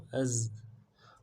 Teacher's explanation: حمزہ کو زا کے ساتھ ملانا ہے، زا میں سیٹی والا حرف ہے